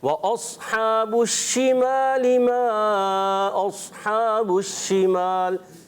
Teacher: شین ادا ہوتا ہے, منہ میں آواز پھیلتی ہے اس میں